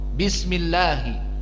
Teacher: al-lam idza kana qablahu kasrah wa huwa dakhal fi lafdil jalalah, maka hukumnya muraqqaqah.